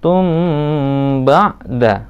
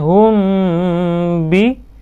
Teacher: Jadi membacanya harus samar-samar dan ditahan, menahan kedua bibirnya. Ya. Pada kata ini yang tadi tum harus ditahan dulu, tum ba'da. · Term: ikhfa safawi